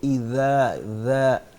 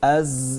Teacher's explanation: جو ذال ہے جو یہاں پہ لکھا ہوا ہے اذا، اس کو جب ہم نے ادا کرنا ہے تو زبان کی نوک اوپر والے دانتوں کے اندر والی سائڈ پہ لگائیں گے